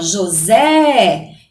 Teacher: Então, ó, José. Então, o Zé é a sílaba mais forte. Então, ela é a última sílaba tônica.